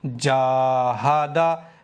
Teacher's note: جیم باریک ہے تو الف بھی یہاں پر باریک پڑھیں گے، موٹا نہیں کریں گے الف کو